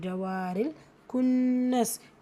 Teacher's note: கேஃப் தொம்மாக்கு நூன் முஷத்ததா குன்னா செஞ்சு ஓதணும்